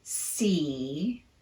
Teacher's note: it's very high in the mouth the middle of the tongue is almost touching the roof of your mouth but not quite · Say the word see and feel what your tongue is doing on that vowel. It's very high in the mouth. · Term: long e sound, long E